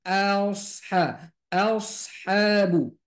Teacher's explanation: jadi shadnya dibaca tebal